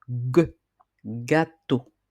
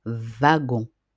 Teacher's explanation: essayez de remarquer comment votre langue se déplace vers l'arrière de votre bouche quand vous prononcez le mot gâteau ou encore le mot bag où on entend bien le gu à la fin du mot ou alors dans wagon. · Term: le son g